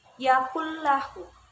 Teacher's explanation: idgham bilagunnah dibaca tanpa disertai dengan dengungan